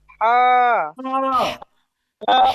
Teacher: গলার মাঝখানে একটু চাপ দিয়ে বলতে হবে